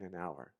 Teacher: the H is silent so even though the word doesn't start with a vowel it sounds like it does